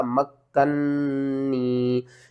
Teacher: میم کو کاف سے ملائیں گے اور کاف کے اوپر شد ہے تو کاف کو 2 بار پڑھیں گے، سختی کے ساتھ پڑھیں گے، کاف کو اپنے سے پہلے حرف کے ساتھ بھی ملائیں گے اور بعد والے حرف کے ساتھ بھی ملا کر پڑھیں گے۔ · یا ساکن سے پہلے زیر ہے، حروف مدہ ہے، ایک الف کے برابر کھینچنا ہے اور یہاں پر نون مشدد ہے تو آپ نے غنہ بھی کرنا ہے۔